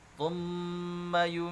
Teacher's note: mim tasydid ya, harus dibaca ghunnah atau dengung, harus ditahan ya.